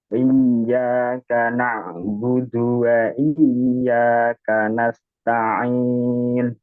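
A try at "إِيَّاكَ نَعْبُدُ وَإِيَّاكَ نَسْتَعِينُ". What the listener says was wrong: Ainnya. Iyyaka na'budu. Na'budu. Ada suara yang sedikit ditahan. Jangan ditahan ya, maksudnya dialirkan. Iyyaka na'budu wa iyyaka nasta'in.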